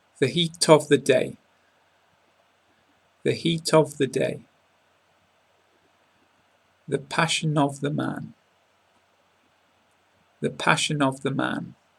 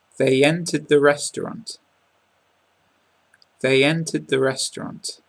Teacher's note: the sound of the consonant is transferred onto the beginning of the second word